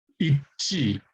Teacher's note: So this is more like a J if it were by itself, but because it's preceded by a double S consonant, it becomes more aspirated.